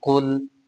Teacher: काफ हरूफ मुस्तालिया में से है इसलिए इसको मोटा पढ़ेंगे। आगे लाम साकिन है क्योंकि इसके ऊपर जज्म है।